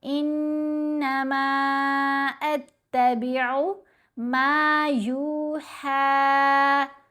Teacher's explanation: میم کے اوپر مد منفصل ہے، 3 سے 4 حرکات کی مقدار لمبا کریں گے